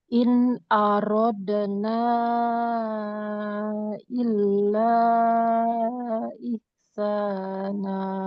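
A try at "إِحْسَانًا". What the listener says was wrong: Ihsana. Jangan berubah hurufnya. Jadi H nanti ya.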